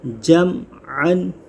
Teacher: جیم میم زبر جم، عین دو زبر عن، جمعن۔ یہاں میم ساکن ہے، میم ساکن کے بعد عین آ رہا ہے، یہاں اظہار شفوی ہوگا، جمعن، گنہ نہیں کریں گے